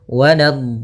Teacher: Untuk mad lazim musaqqal kalimi atau kalimi musaqqal panjangnya 6 harakat, maka panjangkan dotnya dulu 6 harakat, kemudian sempurnakan di dotnya, kemudian baru masuk ke huruf lam · Nah, jangan terlalu lama, jangan waladdallin. Cukup ya menekan di lamnya, kemudian dikasrahkan langsung